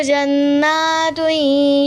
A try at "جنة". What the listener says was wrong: जन्ना नहीं था बेटे, ना को खींचना नहीं था.